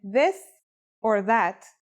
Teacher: pronunciation is a voiced sound the as in this or that it's pronounced with the tongue between the upper and the lower teeth